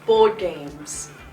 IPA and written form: bɔːd geɪmz (board games)